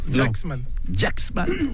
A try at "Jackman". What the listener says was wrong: C'est ça, il y a un petit S.